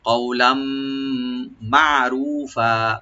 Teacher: তানবিনে পরে যে মিম আসছে এখানে এদগাম উইথ গুন্না হবে, গুন্না সহকারে এদগাম করবো, আমরা সংযোগ করবো।